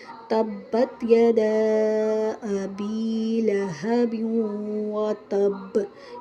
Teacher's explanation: یہاں وتب پر با ساکن کرنی ہے اور ساتھ تشدید بھی ہے تو قلقلہ زیادہ واضح کریں گے